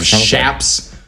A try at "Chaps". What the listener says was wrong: No, it's a hard CH. Chaps. No silent S either. No silent S either.